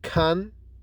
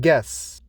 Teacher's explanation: /g/ is voiced and lenis that is it is produced with vibration in the vocal cords and produced with less force